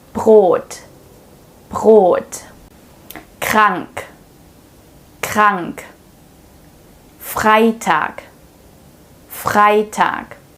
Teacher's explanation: you can really feel it at the back of your throat, that’s where the ‘R’ sound is produced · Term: real German ‘R’